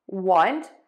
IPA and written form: wʌnt (want)